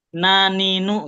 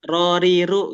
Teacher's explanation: ujung lidah bertemu nanti namanya bertemu gusi ya. Jadi dua-duanya nun dan ro ini ujung lidah bertemu gusi